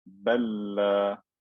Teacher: This lam has sukoon, the next lam had a fatha, they're identical, so I merged it into one lam with shadda.